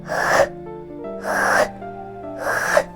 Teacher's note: х х х відчуваєш як ми відтягуємо язичок углиброта там він створює перешкоду через вузеньку щілинку проривається звук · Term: звук х